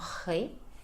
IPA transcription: r̄e